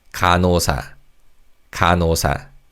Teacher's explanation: because of connected speech, the 니은 받침 in the first syllable carries over to the second syllable. So it sounds like 간호사.